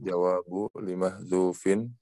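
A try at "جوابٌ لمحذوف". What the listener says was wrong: Jawabun ditanwinkan aja.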